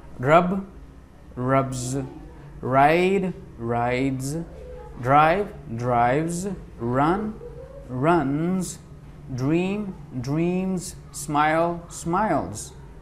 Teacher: agar koi word in sounds pe khatam ho raha hai, b d v n m l, to ye jo final s hai ye z ke taur pe pronounce hoga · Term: voiced sound